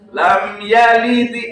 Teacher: Pantulannya itu mutabaah maqoblahu, artinya mengikuti harokat sebelumnya.